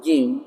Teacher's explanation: Tempat keluarnya itu tengah-tengah lidah menempel dengan langit-langit yang keras. · Sifatnya jim yang pertama aljahr tertahan nafasnya. Yang kedua syiddah tertahan suaranya. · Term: huruf jim